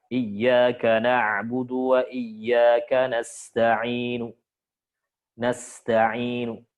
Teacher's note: Nah, nu-nya dibaca tapi pelan dan pendek. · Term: ar-raum